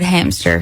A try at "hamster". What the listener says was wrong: There's no P in it.